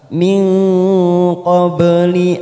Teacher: Kita tekan 3 ketuk atau 3 harokat. Min, ada nun sukun bertemu qaf, namanya ikfa abad. Kita samarkan bunyi nun sukun 3 harokat.